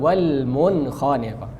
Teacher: Cara izhar jelaskan lidah kita di makhraj nun